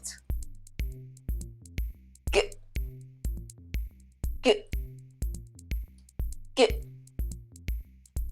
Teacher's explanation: Just like the K sound, you use the back of your tongue to block the flow of air from your throat. However, the G sound is voiced, which means you use your vocal cords to make the sound. To produce the sound, push the tongue forward, create some air pressure, and release it while voicing out. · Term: voiced stop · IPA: /g/